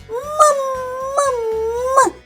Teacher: не співає значить приголосний ма вимовляється м твердо позначаємо рисочкою наступний звук а Це голосний люємо кружечок далі йде